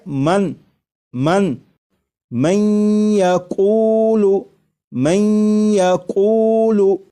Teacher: میں ادغام کر کے پڑھیں گے، ملا کر پڑھیں گے، اور نون ساکن کو یا میں ادغام اس طرح کریں گے کہ غنہ بھی ہو